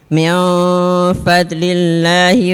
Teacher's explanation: ikhfanya panjang, 2 harkat